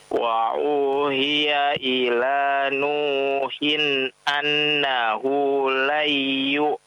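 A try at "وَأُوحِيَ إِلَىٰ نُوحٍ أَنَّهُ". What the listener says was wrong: jangan dipanjangkan nunnya jangan dipanjangkan. Coba ulangi.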